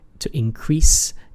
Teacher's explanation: the verb, normally the way you pronounce it, to increase, is in the second syllable